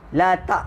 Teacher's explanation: huruf hamzah mati dia bunyi latak. Ha, dia tak ada suara dah lepas ni.